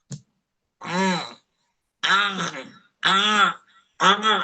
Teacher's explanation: Suara keluar dari aljauf. Dia mengeluarkan suara dengan cara diberikan tekanan. Dia tanpa dia sadari suara itu keluarnya dari hidung.